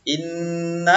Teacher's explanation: Nun tasydid itu dibaca dengung tak boleh cepatnya